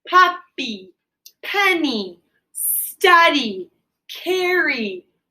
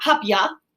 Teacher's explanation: they're all ending in y but they all end in a long vowel sound e